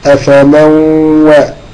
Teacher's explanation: نون ساكنة بعدها الواو، يبقى ده إدغام بغنة